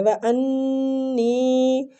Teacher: نون مشددہ غنہ کریں گے، اور یا مد ہو رہا ہے تو اس کو کھینچیں گے